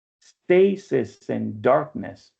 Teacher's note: stressed, unstressed, unstressed, stressed, unstressed